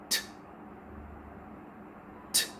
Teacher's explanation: पहले आपने लिप्स की मदद से रोका था, अब आप ज़बान की मदद से हवा को रोकेंगे और फिर उसी तरह से आप हवा को एकदम से प्रेशर से रिलीज़ करेंगे without moving your vocal cords, और आप प्रोनाउंस करेंगे ठ।